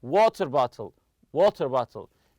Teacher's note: the stress goes on the first part of the compound noun the stress goes on the first part for example you say · We stress the word water on the compound noun.